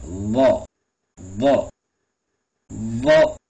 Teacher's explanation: நாக்கினுடைய அந்த நுனிப்பகுதியை மேல் பல்லினுடைய உள்பக்கம் வச்சு சொல்லணும்